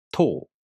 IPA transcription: toː